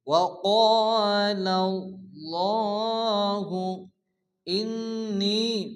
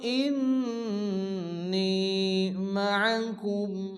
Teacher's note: নুনের উপরে তাশদীদ, নুন গুন্না ওয়াজিব